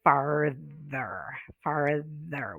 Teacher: Farther, farther, with a voiced TH.